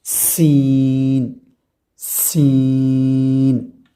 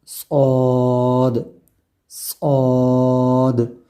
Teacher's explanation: سین کی جو آواز ہے وہ سیٹی کی طرح جو ہے نکلتی ہے، لیکن صاد کے اندر یہ بات نہیں ہے۔ تو سین کو پڑھیں گے ہم، مخرج ان کا وہی ہوگا۔